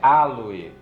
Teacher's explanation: OE lidos separados e a tônica vai estar no A. Porque é um hiato também, o O e o E, né?